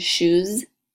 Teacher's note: shoes uses your voice that sounds like a Z